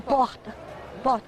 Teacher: sai da garganta também o R ouvido em Belo Horizonte e nas capitais do Norte e do Nordeste. É um R gutural.